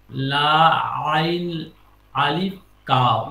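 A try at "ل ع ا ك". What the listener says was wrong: না আলিফ মধ্যে, আলিফ মধ্যে যুক্ত হবে না, লাম আইন, লাম,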